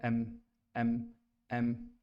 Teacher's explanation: दोनों होंठों को मिला के एम निकलता है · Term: मीम